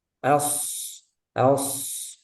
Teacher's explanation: Shad dia punya sifat rakhaah jadi suaranya mengalir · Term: sifat rokhawah